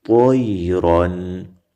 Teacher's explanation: یا نرمه او طا را په ډکه خولو طیرن تنوین کې مې اظهار وکړو